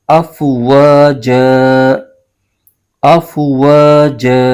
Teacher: یہاں پر وقف کریں گے تو وقف کرنے کی صورت میں دو زبر کی جو تنوین ہوتی ہے وہ الف میں تبدیل ہو جاتی ہے، تو یہاں پر یہ دو زبر کی تنوین یہ الف میں بدل جائے گی.